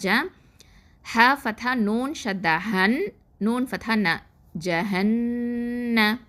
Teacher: இந்த நூன் முஷதாவா, அதனால அங்கே அக்மல் குன்னா